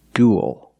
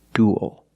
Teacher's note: it ends with a dark l because the L is after a vowel at the end of a word